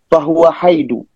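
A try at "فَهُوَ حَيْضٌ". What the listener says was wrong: Dun, din, dan. Iya. Tanwin ya, haidun.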